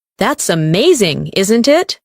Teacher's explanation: Rise and fall for emotion.